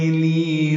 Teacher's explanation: لی یا مدہ ہے، 2 حرکات لمبا کریں گے